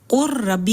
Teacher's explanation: اب دوسری مثال ہے جیسے قر ربی، اب اس میں بھی ہم قل ربی نہیں پڑھ سکتے کیونکہ لام کے اوپر سکون ہے اور را کے اوپر تشدید ہے، یعنی را متحرک ہے، تو اس کو ہم قر ربی کہیں گے، لام کی کوئی صفت ہی باقی نہیں رہی ہے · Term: ادغام تام